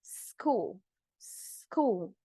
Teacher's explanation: We don't have the E sound, that S sound at the beginning.